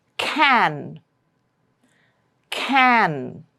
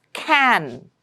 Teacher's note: The nasal tone is not on K, but on the N sound, which comes at the end of the word.